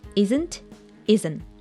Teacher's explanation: There's a combination of letters NT, and as you remember, we dropped the T sound.